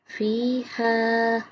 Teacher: ہا کی آواز حلق سے نکالیں گے